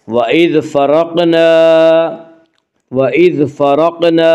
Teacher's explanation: وَإِذْ فَرَقْنَا، الف مدہ، الف ہمیشہ مدہ ہوتا ہے، الف سے پہلے ہمیشہ زبر ہوتا ہے، الف مدہ کو ایک الف کے برابر کھینچ کر پڑھیں گے